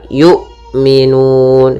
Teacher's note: Kemudian la yu'minun, pada lafal la ada mad tabi'i, yaitu ditandai dengan fathah bertemu alif. Kemudian pada lafal hamzah harus, yaitu suaranya tertahan